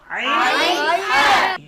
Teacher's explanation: আলহামদু, অনেকে বলে আলহামদু, একটি হলো হা আর একটি হলো হা। কণ্ঠনালীর মধ্যখান থেকে, হলকের মধ্যখান থেকে 2টি হরফ উচ্চারিত হয়, আইন হা।